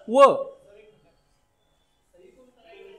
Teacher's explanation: दात आणि ओठ या दोघांच्या मदतीनं उच्चार होणारे एकच अक्षर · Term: दंतोष्ट्य